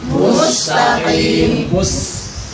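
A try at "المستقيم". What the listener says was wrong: Ya, bukan mus karena sin itu enggak tebal. Jadi ya, tusqa. Sambil lihat mulut saya. Tusqa. Itu yang membedakan antara sin dengan sod nanti. Kalau tusqa itu jadi sod. Nah, berarti sin itu. Ditarik ya.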